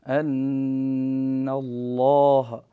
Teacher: كذلك أيضا عندنا اللام من اسم الجلالة، هنا مفخم لأنه وقع بعد فتحة، أن الله، وفخم اللام من اسم الله عن فتح أو ضم